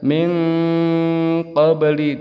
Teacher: Apabila bertemu dengan qaf atau kaf berubah menjadi eng. N menjadi eng.